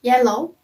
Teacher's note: other consonant is you as in yellow it's voice sound and it's place of articulation is palatal that means front of the tongue is touching close to the palette and it's made of articulation is approximate our next consonant is